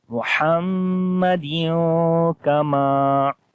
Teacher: پڑھیں گے نون کی آواز کو چھپا کر ناک کے اندر، محمدیوں. دیوں کی آواز آئے گی، دن کی آواز نہیں آئے گی. · کاف کو باریک پڑھیں گے، لمبا نہیں کریں گے. میم کو لمبا کریں گے، الف مدہ ہے یہاں پر، الف سے پہلے زبر آ گئی. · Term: حروف اخفا